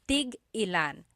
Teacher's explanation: So tig-ilan, when there's a hyphen in it, you have to have that glottal stop. Tig-ilan. That means how many of each.